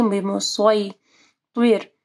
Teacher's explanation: پھر یا ساکن ہے، اس سے پہلے صاد کے اوپر زبر ہے، مدلین آ رہی ہے، بمسوی طیر، طوا کو بھی تیر نہیں پڑھنا، طیر، طوا کو ہیوی پڑھنا ہے